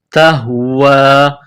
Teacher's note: یہ نقطوں والی تا ہے، اس کو باریک کرنا ہے، تا کو ہا کے ساتھ ملانا ہے. یہ چشمے والی گول ہا ہے، منہ سے ہوا نکالنے کی طرح اس کو پڑھتے ہیں